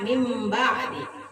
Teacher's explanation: Dan membacanya suara nun diganti dengan suara mim. Contoh, min ba'di dibaca mim ba'di. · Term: iklab